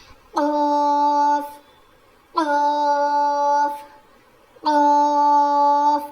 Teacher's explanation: जुबान की जड़ और ऊपर के तालू से कौफ अदा होता है। तो जो हमारी छोटी जुबान है ना जो तालू है ना वो थोड़ा सा ऊपर उठेगा जब हम यह पढ़ेंगे।